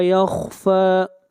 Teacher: خا کو موٹا پڑھیں گے، خا حروف مستعلیہ میں سے ہے